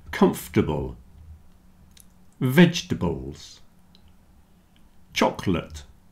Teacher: Comfortable, vegetables, and chocolate have lost their middle syllable, at least for most people. So comfortable, comf-t-able.